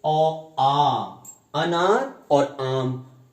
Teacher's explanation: ओ, आ जो होता है ये कंठ से उच्चारित होता है, कंठ। उसके बाद ई, जब इमली और ईख कहते हैं तो जीभ तालू वाले भाग पे हल्की सी स्पर्श होती है, ई।